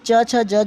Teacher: स्पर्श और संघर्षी जो दोनों है वो च छ ज झ होता है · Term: स्पर्श संघर्षी